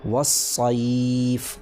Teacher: حرف لین کے بعد فا پر سکون آ رہا ہے وقف کی وجہ سے، آنے کا مطلب ہے سکون پڑھا جا رہا ہے وقف کی وجہ سے۔ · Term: مد لین عارضی وقفی